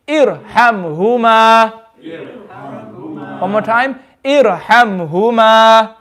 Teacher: We have a ra sakin and there's a alif with a temporary kasra, so it's also going to be full mouth.